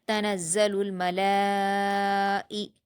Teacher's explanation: تنزل الملائکتو میم پر حرکت جلد پڑھیں گے، لام پر کھڑا زبر ہے جو الف مدہ کے برابر ہوتا ہے اور یہاں کھڑا زبر کے بعد حمزہ اسی کلمے میں ہے اس لیے مد متصل ہوگا اور اس کو ہم 5 حرکات کے برابر کھینچیں گے